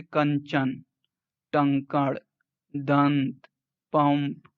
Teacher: यह अनुनासिक व्यंजन का रूप है, जिसका उच्चारण मुख व नाक दोनों से होता है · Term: अनुस्वार